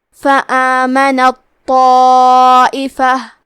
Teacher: کلمت طائفہ میں تو حروف التفخیم میں سے ہے، تو ہمیں تو کو موٹی آواز میں پڑھنا ہے، اور کیونکہ اس کے بعد مد الف ہے تو ہم مد الف کو بھی تفخیم سے ادا کریں گے.